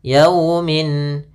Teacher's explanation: Kemudian lafal yau ada fathah bertemu sukun, ini bacaan lin, lembut dalam pelafalannya. Yaumin. Kemudian pada lafal min ada bacaan izhar halqi, yaitu ditandai dengan tanwin pada huruf mimnya bertemu dengan hamzah, maka suara tanwinnya harus jelas.